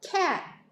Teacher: cat 이렇게 그냥 릴리스를 안 하고 이렇게 막혀서 그냥 끝나는 거죠. 어떻게 보면 여기에서 때로는 글로럴 스탑으로 발음하는 경우도 많이 있습니다. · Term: unreleased T